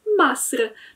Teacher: w dialekcie egipskim będzie mówiło się Masr, czyli zamiast I mamy A. To słowo w pisowni wygląda zupełnie identycznie, natomiast inaczej się je czyta.